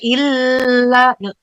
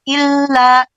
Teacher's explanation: Fiha madamatis samawati wal ardu illa ma itu yang nggak boleh illa. L-nya nggak boleh ditahan terlalu lama.